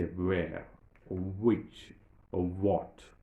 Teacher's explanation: But remember, and you know that we are not supposed to pronounce, we are not supposed to articulate that h sound there. We don't say which, we don't say where, we simply say where, or which, or what.